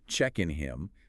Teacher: Check in him places the weak syllable at the end, causing the rhythm to fall flat